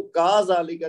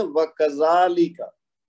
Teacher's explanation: इसको काफ को लंबा नहीं करना, जाल को लंबा करना है, क्योंकि उस पे है खड़ा जबर जो अलिफ मद का बदल है, लेकिन काफ के ऊपर जबर है, तो इसको का जाली का नहीं कहना, इसको कहना है व कजाली का.